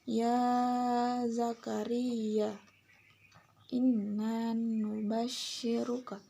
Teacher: gunnah karena nunnya ditasyid